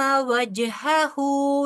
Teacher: नून साकिन के बाद हमजा है लिहाजा यहां पर इज़हार होगा जीम के ऊपर कलकला होगा क्योंकि जीम साकिन है